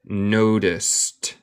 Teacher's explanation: Otra vez, este no tiene e y el d suena como t.